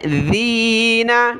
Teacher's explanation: دال پر زبان نکالنی ہے